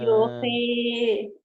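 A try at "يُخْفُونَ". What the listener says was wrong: yuki bukan yuhi yuki yuki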